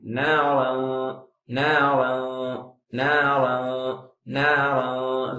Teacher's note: தன்வீனுக்கு பிறகு தால் அதாவது இஹ்ஃபாவுடைய எழுத்து இருப்பதின் காரணத்தினால் இஹ்ஃபா செய்வேன்